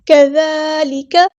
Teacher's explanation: لام باریک یہاں پہ لائٹ لیٹر ہے، کاف بھی باریک لائٹ لیٹر ہے